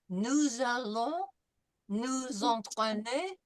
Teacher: we're going to make this liaison between the S and the A, and it's going to be with a Z sound. Nous allons, nous entraîner, because once again, the same thing, S followed by a vowel.